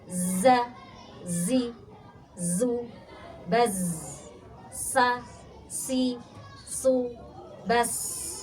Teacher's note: Zai dan sin satu makhraj ujung lidah ke gigi yang bawah dan sama-sama punya sifat istimewa namanya shofir berdesis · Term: sofir, berdesis